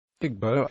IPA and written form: ˈɪɡboʊ (Igbo)